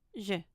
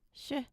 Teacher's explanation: J is the voiced pair of sh.